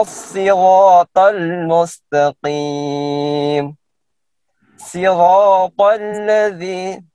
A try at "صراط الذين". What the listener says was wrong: هنا ليس السين هنا الصاد. صراط صراط صراط الذين.